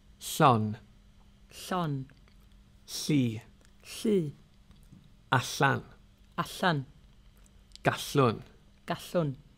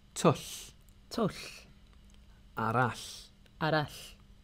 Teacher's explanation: With double L, your tongue starts in the position ready to pronounce a normal L, but instead of saying L, you whisper and blow air out the sides of your tongue. There's no voice involved. Put your fingers on your Adam's apple and you shouldn't be able to feel any vibrations.